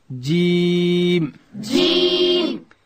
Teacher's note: جیم ادا کیږي چې کله د ژبې منځ لوړ تالو ته ورپورته کو